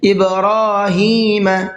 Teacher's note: الی ابراہیم، الی کے اوپر یہاں بھی چھوٹا مد بنا ہوا ہے، یہ بھی مد منفصل ہی ہے، اس کو 1 سے 3 الف کی برابر کھینچ کر کے پڑھنا ہے۔ ابراہیم، با میں قلقلہ کریں گے اور را کو کھینچ کر کے بھی پڑھنا ہے اور پر کر کے بھی پڑھنا ہے، ابراہیم نہیں پڑھنا ہے اس کو بلکہ ابراہیم۔